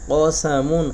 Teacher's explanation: কফ অবশ্যই গলার ভিতর থেকে উচ্চারণ করতে হবে, কফ গম্ভীরভাবে